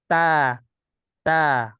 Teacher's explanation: Ta, ujung lidah bertemu pangkal gigi seri atas. Ta, ta. Ini kan datar ya pangkal lidahnya. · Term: huruf ta